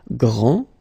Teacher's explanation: This final D is not pronounced.